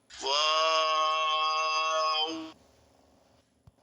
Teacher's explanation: 2 ঠোঁট গোল করে শুরু হবে, 2 ঠোঁট গোল হয়ে শেষ হবে, মাঝে কিছু টাইম মুখ খুলে থাকবে, 4 আলিফ লম্বা হবে।